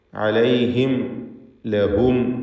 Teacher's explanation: സാക്കിനത്ത മീമുകളെ ഇദ്ഹാർ ഷഫവി നൽകി മണിക്കാതെ വെളിവാക്കേണ്ടതാണ്